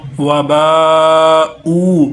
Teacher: इसके ऊपर मद है, ऊ को एक अलिफ लंबा करेंगे